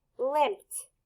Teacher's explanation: Just like we did in slump, we know that P is unvoiced, so you're going to hear T at the end.